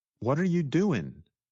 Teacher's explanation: Many times, the ing at the end of words gets shortened to just the sound in.